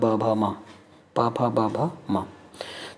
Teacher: किस वर्ग के वर्ण को बोलने से आपके होंठ दोनों आपस में मिलते हैं, तो वो है प वर्ग